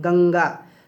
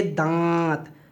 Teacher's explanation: अब जब हम बोलेंगे दांत, तो देखिए नाक और मुंह दोनों से हवा निकल रही है, दोनों जगह को आप महसूस कर पाएंगे। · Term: अनुनासिक